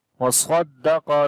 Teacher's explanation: صاد we read in heavy sound, qaf also we read in heavy sound